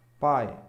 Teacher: quando a vogal vem primeiro então nós temos um ditongo decrescente